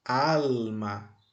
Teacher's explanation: aqui e posso agora destacar a sílaba tônica alma é al al é a sílaba tônica e qual é a sílaba átona é ma